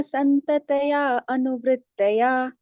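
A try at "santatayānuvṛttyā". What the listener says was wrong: Santatayanu vritya. So you took a little more time. Santataya anu. You mentioned Santataya anuvrittaya.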